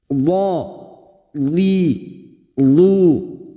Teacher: Aqsahafatul lisan ila adnaha ma'al adras. Tepi pinggir lidah bagian pangkal sampai ujungnya ditempelkan pada gigi geraham bagian atas. Pinggir lidah kita tempelkan, gigi geraham atas boleh kiri, boleh kanan. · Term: huruf dhad